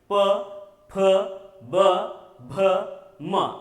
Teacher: और प फ ब भ म, इन्हें ओष्ठ व्यंजन कहा जाता है, क्योंकि इनका उच्चारण करते समय अगर आपने गौर किया, ध्यान किया, तो ओंठ जो है स्पर्श हो जाते हैं, ओंठ चिपक जाते हैं